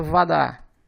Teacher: Como o O está em uma sílaba átona, ele é pronunciado como se fosse um A, portanto a pronúncia Vadá.